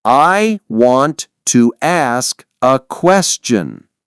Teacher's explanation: you can say want to and still link the t to the next word.